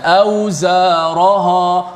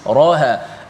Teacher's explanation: Ra dengan ha sama tebal. Sepatutnya ra yang tebal, ha nipis.